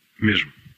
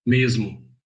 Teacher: Before a voiced consonant, in European Portuguese it's j. In Brazilian Portuguese it's z in most accents.